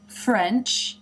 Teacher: the bottom lip moves up to the f position, and then the mouth opens into the eh